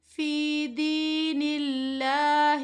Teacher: باریک پڑھنا ہے کیونکہ اللہ کے لام سے پہلے زیر ہے